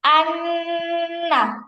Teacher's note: আমি এইযে নন ধরে রাখছি। এটা নাকের থেকে উচ্চারণ করছি। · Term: গুনা